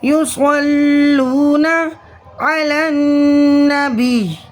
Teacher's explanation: وقف کی صورت میں یا کا زیر ختم ہو جائے گا، تشدید باقی رہے گی